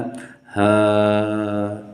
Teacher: कंठ से आवाज़ निकल रही है और सीधे मुख से बाहर जा रही है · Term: कंठ काकल